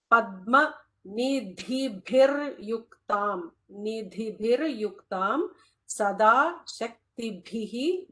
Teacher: That last bha is a mahaprana.